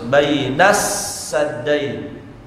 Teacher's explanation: Alif lamnya tidak tersentuh sama sekali. Langsung huruf sin. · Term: alif lam syamsiyah